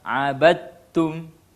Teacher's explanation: Huruf dal melebur langsung ke dalam huruf ta. Inilah yang disebut dengan idgham mutajanisain.